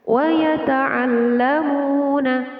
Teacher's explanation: Wa yata'allamuna waw sukun yang didahului harokat dhammah. Jadi mim dibaca panjang. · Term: mad tabi'i